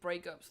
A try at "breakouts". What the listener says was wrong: Breakouts? sounded like you're saying breakups.